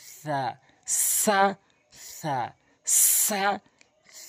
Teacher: জিহ্বার আগাটি নিয়ে উপরে নিচে দুই দাঁতের আগাতে যখন লাগাবেন তখন সিন সা হবে, আর সা জিহ্বার আগার সামনে দুটি দাঁতের আগাতে লাগাবেন সা নর্মালি।